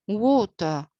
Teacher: stressed while the second and the final part is unstressed because i can say water without pronouncing the r sound according to the british pronunciation